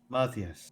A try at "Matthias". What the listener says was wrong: Don't pronounce the H. It's Matthias.